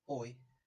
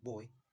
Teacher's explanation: your tongue moves from a low mid back mid back position to a mid-high front position and your lips move from rounded to unrounded